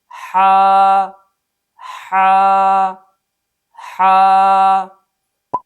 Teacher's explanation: اس حرف کے مخرج اور صفات کے پیش نظر اس حرف کو ادا کرتے ہوئے کئی اصولوں کا خیال کرنا چاہیے۔ نمبر 1، اس حرف کو صفت رخوت کی وجہ سے نرمی سے ادا کریں گے · اس حرف کا مخرج وسط حلق ہے، یعنی جب حا کو ادا کریں گے تو گلے کے درمیان سے ادا کریں گے۔